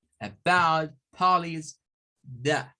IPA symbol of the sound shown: ə